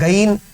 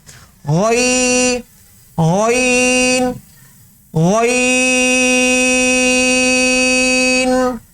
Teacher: غین میں اس بات کا بھی خیال رکھنا ہے کہ اس میں گاف کی امیزش نہ ہو، جیسے اردو میں گاف ہوتا ہے نا گین، یہ اس کی امیزش اس کے اندر نہ ہو، غین غین غین۔